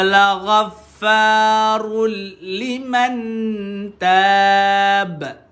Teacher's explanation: Atau nak berhenti dekat sini pun boleh. Tapi dengan syarat keluarkan ba ni dalam bentuk qalqalah lah